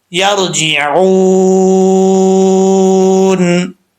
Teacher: जब ये मद्दे आरिज वक्फी होगी उस वक्त 2 से 2.5 अलिफ की मिकदार इसको आप लंबा कर सकते हैं